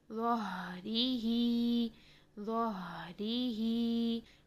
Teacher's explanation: ہا ساکن ہے، اس کو ہم نے پرومیننٹ کرنا ہے، ہا ساکن پر آواز اور سانس دونوں کو جاری رکھیں گے۔ اسی طرح اگر ہم وقف کرتے ہیں بھی، اس میں بھی سانس آواز کو جاری رکھیں گے۔ · یہاں پر دونوں جگہ پر ہم ہا ساکن میں آواز اور سانس کو جاری رکھیں گے